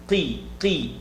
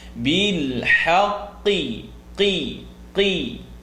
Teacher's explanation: don't fill the mouth with air because the qaf is heavy, but you have to get the e sound out